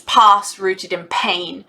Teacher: you've got these plosives with the repeated p's